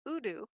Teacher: if this was udu you would see a little vibration even during the consonant